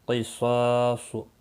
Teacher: قاف صاد اور صاد تینوں مستعلیہ ہیں، پور پڑھے جائیں گے